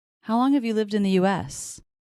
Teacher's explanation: And then U.S. is probably the most stressed. U.S. And the pitch goes down at the end.